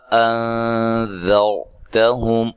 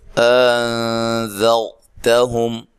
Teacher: ایک ہے تسہیل نرمی کے ساتھ، وہ پھر حمزہ بہت نرم ادا ہوتا ہے، کبھی وہ حرف مدہ میں سے کسی کے مشابہ ہو جاتا ہے